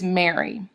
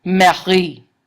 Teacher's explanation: Same name, but it just has the syllable emphasis reversed. Okay. Now, a line of iambic pentameter is just 5 iambs or iambic feet in a row, as I said.